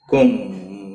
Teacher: میم ساکن کے بعد جب بھی دوسرا میم آتا ہے تو اس ادغام کو ادغام شفوی کہتے ہیں، گنہ کے ساتھ پڑھیں گے۔